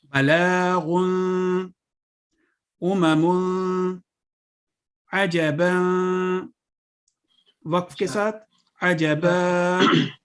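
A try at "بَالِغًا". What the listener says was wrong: نہیں وقف کے ساتھ نہیں، ان کو ایک دفعہ یہ پہلی لائن آپ پڑھ دیں کہ جب تنوین کو آپ نے نون ساکن کے طور پہ پڑھنا ہے اظہار کے ساتھ. غدقن وقف کا بھی نہ کریں.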